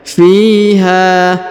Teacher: Huruf fi dipanjangkan 2 harokat karena di depannya terdapat ya sukun. Kemudian huruf ha dipanjangkan 2 harokat karena di depannya terdapat alif ya.